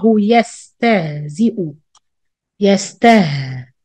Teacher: hear the sound of ha 50% air 50% sound